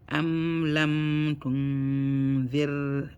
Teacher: you're gonna hold the raw sukun for 1 second to make it flat